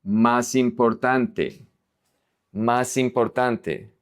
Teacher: The S is going to connect to the I.